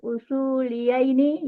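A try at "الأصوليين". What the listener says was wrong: Kan usuliyah ini jangan digandakan, jangan.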